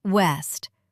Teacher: The W sound is soft and round. No teeth involved. Pucker your lips like you're blowing a kiss. West. Only air and rounded lips.